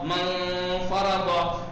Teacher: نون کو اس کے مخرج پہ نہیں لگائیں گے، بس ناک سے ادا کریں گے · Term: اخفا